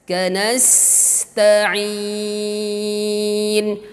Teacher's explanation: sin safir ujung lidah dengan gigi seri bagian bawah. Kanasta'in, ta juga syiddah ujung lidah dengan pangkal gigi seri atas.